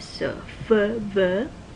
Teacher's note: So the difference between f, v is, remember these are labiodental sounds because your teeth, upper teeth, bite down on your lower lip. But the difference between f and v is that v is voiced.